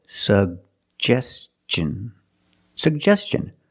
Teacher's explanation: n the T makes the CH sound so together suggestion suggestion put the stress on the second syllable